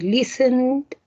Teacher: si usted se toca y dice listen se va a dar cuenta que se mueve las cuerdas vocales entonces ahí se pone una d al final del verbo listen